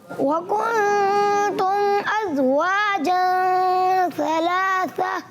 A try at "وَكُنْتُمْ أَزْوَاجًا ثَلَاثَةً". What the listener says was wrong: اب سا درست کر لیا مگر زا جو ہے وہ سا کا مخرج سے ادا ہو گیا. ازواجن کیا؟ جی یہ بھی درست رکھنا ہے.